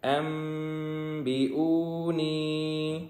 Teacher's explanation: یہاں پہ نون ساکن کی وجہ سے اخفا ہوگا